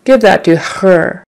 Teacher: you might tend to emphasize the H in pronouns like his and her, he, much more than we would in America.